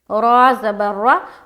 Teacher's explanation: را کو پر کریں گے کیونکہ را کے اوپر کیا ہے؟ زبر ہے